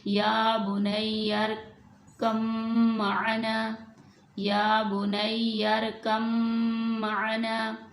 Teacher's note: यानी बा को हमने मीम के अंदर मिला दिया है, मुदगम कर दिया है, तो हम बा पे अब इस बा को यहाँ पे ख़त्म कर देंगे, मीम पड़ेंगे।